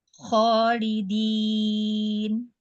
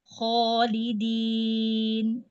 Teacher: Jadi sepanjang bunyi kho yang dibaca panjang 2 harokat, maka di situ ada alif yang juga harus dibaca tebal.